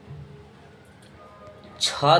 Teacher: छ ध्वनि का आप सभी बच्चे उच्चारण स्थान बताइएगा तो तालव्य हो जाएगा।